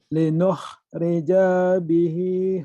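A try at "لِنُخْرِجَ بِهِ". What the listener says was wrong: Bacanya panjang. Kagok ya. Kalau sampai kan baca gini. Linuh rija. Panjangnya pendek. Linuh rija bihi. Linuh rija bihi. Linuh rija bihi. Jangan linuh rija. Jangan. Nggak ada madnya. Nggak ada bacaan panjangnya. Ya, yang namanya mad.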